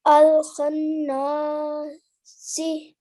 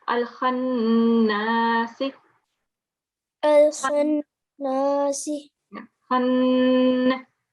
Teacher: So what we have to do again is to pause and give 2 seconds on the noon ghunna